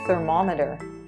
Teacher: The second syllable gets the stress.